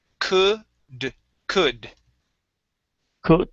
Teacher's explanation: the L here is silent so we do not pronounce the L